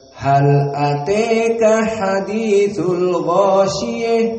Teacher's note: Maka kecuali qiraah dari al-Kisai, maka menjadikan ta al-marbutah dengan ha at-ta'nits, maka dibaca dengan al-imalah al-kubra